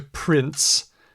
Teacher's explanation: you're going from nasal the N comes out your nose the S comes out your mouth · to S you're just opening that up a little bit and if you go from nasal to oral just a hair before or you let go of that n and drop it to the S drop your tongue down to the S it's going to have a t sound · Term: imprecise articulation